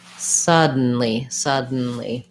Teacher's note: so it sounds like first syllable stress sub n lee and the n in this word is a syllabic n so